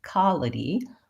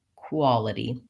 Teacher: that W sound might drop off so I might hear somebody say something more like qaulity rather than quality